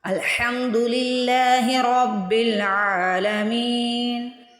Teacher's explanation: مین کو میں نے 1 الف کے برابر کھینچا ہے تو میں نے قصر کیا